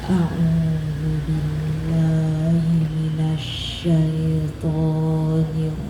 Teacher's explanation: ta'awuz ini nada a'udzubillah itu nada yang paling serendah-rendahnya.